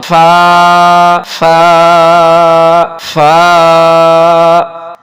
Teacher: یہ لفظ فا ہے، فا کے اوپر 1 نقطہ ہے، اور اس کی کھینچنے کی مقدار 1 الف ہے، اوپر کے دانت اور نیچے کے ہونٹ یہ جب آپس میں ملیں گے تو فا ادا ہوگی